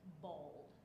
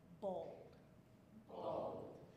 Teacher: Because I am from the low country of South Carolina, right down near Charleston, I would most likely pronounce it close to that second, B-O-W-L-D, bold. And now that D is just like a silent little flick at the end